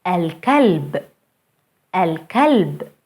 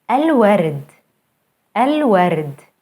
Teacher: Moon letters allow the L before them to be pronounced fully as L.